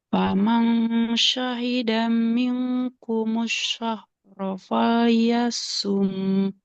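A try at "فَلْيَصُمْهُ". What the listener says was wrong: Falyasum. Nggak panjang. Nah, nggak boleh. Kan domah nggak ada wawunya. Jadi nggak boleh panjang. Falyasum.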